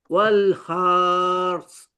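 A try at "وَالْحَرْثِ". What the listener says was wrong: Okay, bunyi yang betul adalah bacaan tadi bunyi dah ada, cuma terpanjang ra tu. Dia tak boleh, dia terpanjang ha tu. Wal hars. Dia terpanjang. Dia bunyi dia pendek je. Har tu. Masuk har dulu. Kemudian sa tu kita hanya keluarkan angin je. kalau saya baca pelan-pelan bunyi dia macam ni Wal har.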